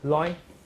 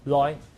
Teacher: 1-1 means the lowest level tone. But in my accent, 海 陆, it pronounced the highest 5-5